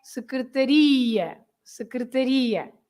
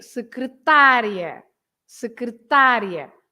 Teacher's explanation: And because there is an ia, you stress the end, right?